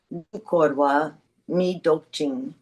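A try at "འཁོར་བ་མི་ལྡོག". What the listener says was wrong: Really heavy prenasal there. Korwa Mindok.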